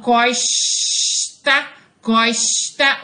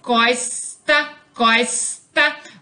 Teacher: a pronúncia do S para os cariocas é chiada, ao contrário da dos paulistas que pronunciam o S como sibilante